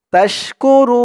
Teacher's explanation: অক্ফ করার কারণে পেশের পরে ওয়াও সাকিন এক আলিফ টানটা তিন আলিফ টান হয়েছে